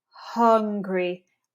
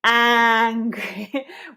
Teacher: we want to really, really make the mouth lazy for that U. And for the A, we need to stretch and open wide.